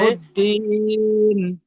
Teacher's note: লাহুদ্দিন এখানে দাঁড়ানোর কারণে তিন আলিফ পরিমাণ টান হচ্ছে, কিন্তু যদি এখানে আমরা না দাঁড়াই, আগের সাথে মিলিয়ে পড়ি, তাহলে কিন্তু ওই টানটা আর হবে না।